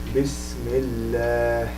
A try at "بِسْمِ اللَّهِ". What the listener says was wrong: The ha a little bit lower, a little bit. Yeah, it has that small ha, just very subtle thing.